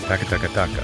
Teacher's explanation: Japanese is a more-timed language. It has a very consistent, almost machine gun syllable flow. Every syllable takes up roughly the same amount of time.